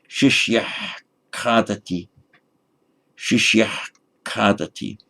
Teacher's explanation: The normal way to say it would be shishya kadati, but pronounced carefully in Vedic, that the ha at the end of shishya has a more throaty ha to it at the point where the k comes out